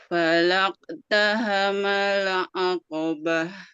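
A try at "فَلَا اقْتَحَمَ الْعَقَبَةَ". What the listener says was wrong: Coba huruf qafnya Bu. Falaqo. Fa. Nah, cuman hati-hati juga jangan sampai tergesa-gesa ya. Jadi sempurnakan dulu huruf qafnya. Falaqtahamal 'aqabah. Jadi memang nanti qalqalah ini tidak secara langsung Bu, enggak gini. Falaqataha tapi falaqatahama. Sempurnakan dulu pantulannya baru nempel. Ini khususnya huruf qaf ya.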